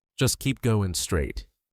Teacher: The G disappears, so it's going.